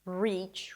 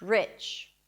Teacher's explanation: the first one is the tense E, and the second one is the relaxed I